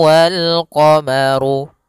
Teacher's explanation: rnya dibaca tebal karena dia huruf ro yang berharakat dommah